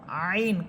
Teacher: কণ্ঠনালীর মধ্যখান থেকে আইন